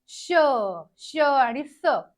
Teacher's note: आहेत उष्मे किंवा घर्षक आहेत कारण श या वर्णांचा उच्चार करताना तोंडामध्ये उष्णता निर्माण होऊन एक प्रकारचं घर्षण तयार होतं श आणि स घर्षण तयार होतं म्हणून यांना उष्मे असं